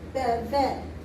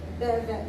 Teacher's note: So if these were together, you would say beve. The second syllable normally is emphasized. So it's not beve, it's beve.